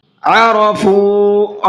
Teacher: را کو منہ بھر کے پڑھنا ہے اور فا کو کھینچ کر کے پڑھنا ہے